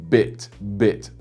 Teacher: the b in English such as in bit bit um you've got the voice behind it making it a bit more powerful of a sound